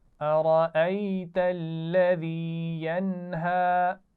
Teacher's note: क्योंकि नून साकिन के बाद हुरूफ हलकी में से हा आ गया है, तो यहाँ पर गुन्ना नहीं करेंगे